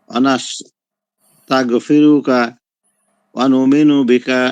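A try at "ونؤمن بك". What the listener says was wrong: ওয়া নুমিনু বিকা না, ওয়া নুমিনু বিকা, ওয়ার উপরে হামজা পড়বে।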